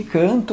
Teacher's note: por que é um dígrafo vocálico? Porque aquele N só marca a nasalização da vogal, gente, tá?